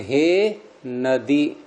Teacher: नदी दीर्घ इकारांत है, लेकिन संबोधन बोलेंगे इसका तो हे नदी, द में ह्रस्व ई हो गया